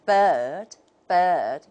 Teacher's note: if we take the British model you can hear a very clear long vowel